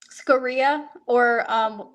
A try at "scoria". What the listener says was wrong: actually pronounced scoria, So the inflection is on the O, like scoring a win, scoria.